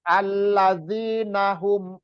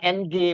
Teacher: suara Nun itu samar dan persiapan ke huruf SH alladinaahum Jadi bukan Ang bukan Ang bukan ng bukan bukan Eng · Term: ikhfa